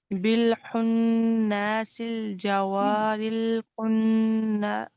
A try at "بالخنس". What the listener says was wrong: دیکھیں نون کو نا لمبا نہیں کرنا، نون زبر نہ. بالخنس الجوار الکنس.